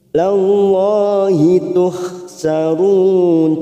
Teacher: lam jalalah yang didahului fathah kita baca tafkhim. Lallahi tuhsarun, tuhha lembut, la ilallahi tuhsyarun.